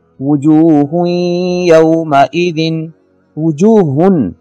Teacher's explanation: وجوہ یومئذ، وجوہن تنوین ہے 2 پیش کی شکل میں، اور نون تنوین کے بعد ینمو میں سے یا آ رہا ہے، لہٰذا یہاں پہ ادغام ہوگا اور غنہ ہوگا